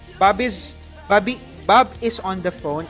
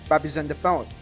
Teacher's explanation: the first word is ending on consonant and the second word is starting on vowel. Okay, so you join them. Babes, not Bob is. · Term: join two words